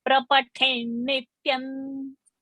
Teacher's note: Let there be pressure. Let the pressure be on the tha. One, it is Mahaprana, and the next is a conjunct of double na.